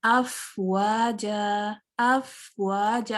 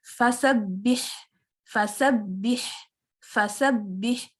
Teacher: Timing में अफ में थोड़ा ज्यादा था लेकिन फा में कम था क्योंकि फा के ऊपर फतहा है, लेकिन हम्स दोनों में मौजूद है।